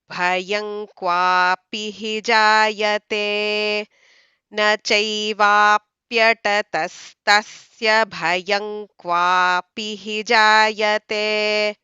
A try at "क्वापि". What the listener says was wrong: Qua, you don't have to drag so long, okay?